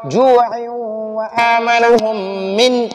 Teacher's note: کے بعد جیم ہے، جیم حروف حلقی میں نہیں ہے تو نون ساکن میں غنہ کریں گے، ناک میں آواز چھپائیں گے ، جوع وآمنهم من، ادھر نون ساکن کو من پڑھیں گے،